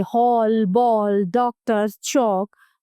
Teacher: इसका उच्चारण आ और ओ के बीच की ध्वनि के रूप में होता है। इसका प्रयोग अंग्रेजी से हिंदी में आए शब्दों में किया जाता है, जैसे हॉल, बॉल, डॉक्टर, चौक आदि। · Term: आगत ध्वनि